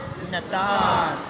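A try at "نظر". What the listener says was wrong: Nathar. Again, you see the DJ. So it's not Nathar. It's not a TH sound. It's the DJ. Nathar.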